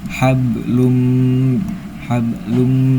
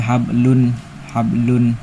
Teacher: Cara bacanya dimasukkan sambil berdengung. Yang dimasukkan itu tanwin domahnya langsung dimasukkan ke huruf mim. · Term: idgham bigunah